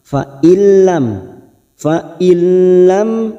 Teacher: ini yaitu huruf lam dan huruf ro namanya idgam Bil guna hanya masuk tanpa mendengung tanpa ditekan lama-lama · ada Nun nun sukun bertemu lam namanya bacaan Idgham bila gunah nun sukun atau tanwin yang bertemu dengan dua huruf ini yaitu huruf lam dan huruf ro namanya idgam Bil guna hanya masuk tanpa mendengung